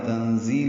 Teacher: تنزیل میں نون ساکن کے بعد زا آنے کی وجہ سے اخفا ہے، نون کی آواز چھپائی جائے گی. زا تیز صفیر کی آواز سے ادا کریں گے.